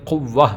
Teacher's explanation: گول تا کو ہا میں بھی بدلیں گے، ساکن تو ہوگا ہی لیکن اس کو ہا میں بھی بدلیں گے